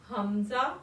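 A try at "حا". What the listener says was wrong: हा मुंह खोल के हा। हा भारी आवाज में हा आइन और हा एक ही मकसद जगह से अदा होंगे ना।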